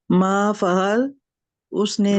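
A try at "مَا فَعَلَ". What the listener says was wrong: फ़अला, फ़अला। अगर मा फ़अल कहेंगे तो नहीं आएगा ना, उसका मतलब फ़अला, फ़अला दो जबर और तीन जबर वाले है ना ये आ रही।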